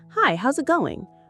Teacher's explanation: Rising tone on going.